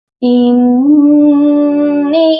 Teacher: اس کی نون مشدد ہے، یہاں پر غنہ کریں گے اور نون کے ساتھ یا مدہ بھی ہے اور اس کے اوپر مد ہے.